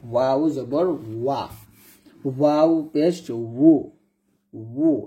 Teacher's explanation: দুই ঠোঁট গোল করবেন, ঠোঁটের গোল করে যে উচ্চারণটা আসবে সেটাই সঠিক।